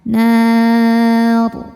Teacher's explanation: Maka patokannya adalah nun, ya, huruf ketiga. Karena nunnya berharokat fathah maka ro-nya ikut tebal. Nar. Namun ketika diteruskan, ro ini kan harokatnya pasti kasrah tanwin tidak berubah, maka dibacanya tipis. · Dan ketika berhenti, ro dibaca secara tafkhim. Kenapa? Karena ro-nya ini pasti disukunkan.